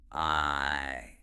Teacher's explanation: You start open, then close a bit. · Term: diphthong